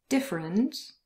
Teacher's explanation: there is a very short schwa sound between the f and the r, but it could also disappear entirely and then it would sound like this, different. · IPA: /ə/